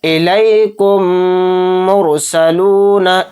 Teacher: تو دیکھیے یہاں پر میم ساکن ہے، میم ساکن کے بعد میم آ گیا، اور ادغام شفوی میں کیا بیان فرمایا گیا ہے کہ میم ساکن کے بعد میم آئے تو میم کو میم کے ساتھ ملا کر غنّہ کریں گے، یعنی غنّہ کے ساتھ یہ پڑھا جائے گا۔